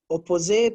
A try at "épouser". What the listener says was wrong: OU is ou, so we say épouser, to marry.